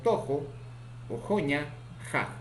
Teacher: Tenemos a las palabras como hani, tukata, muhu. Consonante ja, fricativo, postvelar, sordo, ocurre en posición inicial, medial y final